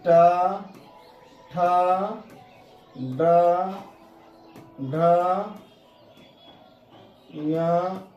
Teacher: ऋ ट ठ ड ढ न और मूर्धन्य स इसका उच्चारण मूर्धा से होती है और इनके उच्चारण में हमारा जीव मूर्धा को टच करती है।